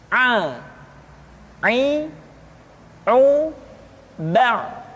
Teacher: huruf A dikeluarkan dari tengah-tengah tenggorokan seperti kita mengucapkan huruf H. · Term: huruf Ain